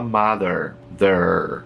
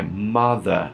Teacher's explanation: O britânico não pronuncia R em final de palavra. É mother. Esse R morre, vira A, morre.